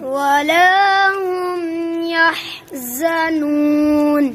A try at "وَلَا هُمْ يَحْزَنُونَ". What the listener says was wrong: नू को नाक में न पढ़ो